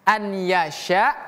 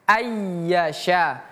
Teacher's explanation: Melebur bukan an lagi tapi langsung pindah ke huruf selanjutnya yaitu ya ay. Jadi bukan an yasya tapi ayyasya. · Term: idgham bighunah